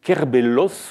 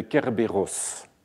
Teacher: Et cela, c'est pour lutter contre le lambdacisme ou l'allation, qui est la tendance à remplacer le rho par un lambda